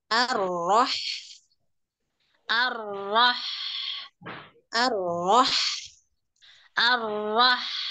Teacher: rnya tetap tebal Hnya yang tipis ya